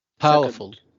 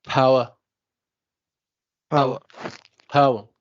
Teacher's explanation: the stress is on the first syllable